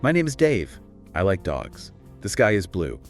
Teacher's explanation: speaking with a flat, monotonous tone